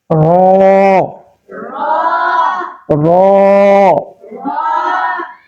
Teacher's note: তার বরাবর উপরের তালুর সঙ্গে লাগাইয়া। র র জিহ্বাটা উল্টায় উপরের তালুর সঙ্গে লাগাই দিতে হবে। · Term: 10 নাম্বার মাখরাজ